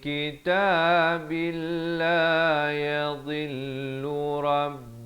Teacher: Maka dia jadi hukum idgham bila gunnah. Daripada kitabin jadi kitabil, masuk tanpa dengung.